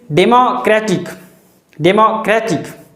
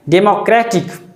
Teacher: There is a stress or emphasis on cra.